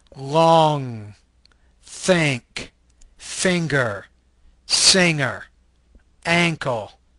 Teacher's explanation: This is a velar, nasal voice consonant.